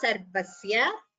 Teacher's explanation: Sya is short, so please don't prolong it. It's a short letter.